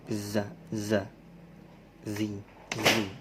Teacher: Ada namanya huruf sofir berdesis, menyerupai suara lebah.